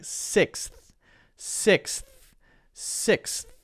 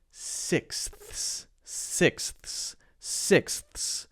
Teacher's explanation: six ends with the S sound and then we have to go to the th sound right then you have to go back to the S sound